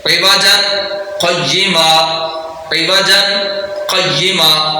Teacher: آواز کو تھوڑی دیر کے لیے روکا ہے لیکن سانس کو نہیں توڑا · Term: سکتہ